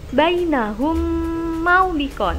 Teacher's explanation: ada huruf mim sukun bertemu mim sehingga bacaannya digabung dan menghasilkan bacaan dengung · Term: Idgham mislain